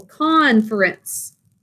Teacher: we are going to have an accent on the first syllable